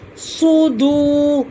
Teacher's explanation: صاد کو موٹا پڑا جائے گا، واو ساکن سے پہلے پیش ہے، ایک الف کے برابر کھینچا جائے گا